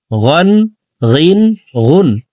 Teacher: গইন হরফকে হলকের শেষ থেকে পড়ব।